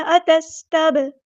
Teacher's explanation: سین کی سیٹی واضح ادا کرنی ہے، اتس نہیں کرنا، اتستب، با ساکن کو ہلانا ہے، کلکلا ہو رہا ہے